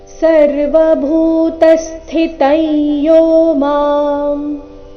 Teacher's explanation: ಭೂ ಇಲ್ಲಿ ಮಹಾಪ್ರಾಣ ದೀರ್ಘ ಭೂ ನಂತರ ತ ಮೇಲೆ ಆಘಾತ ಶಬ್ದದ ಕೊನೆಗೆ ಅನುಸ್ವಾರ ಉಚ್ಚಾರಣೆ ನಾಸಿಕ ಯ ರೀತಿ ಬರಬೇಕು.